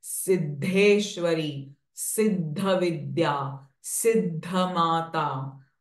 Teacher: So this the sound, the and the, Alpa Prana and Mahaprana are joined together.